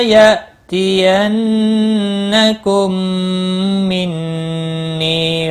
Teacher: میم ساکن کے بعد دوسرا میم آئے، ادغام شفوی ہوگا، غنہ کے ساتھ پڑھیں گے